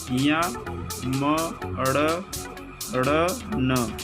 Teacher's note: नासिका नाक से बोले जाने वाले वर्ण